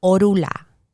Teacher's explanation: the N for some reason disappears in the pronunciation